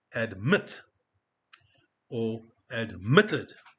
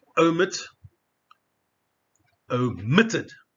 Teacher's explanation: You see the stress in this case on the second syllable. The second syllable, so it's omitted.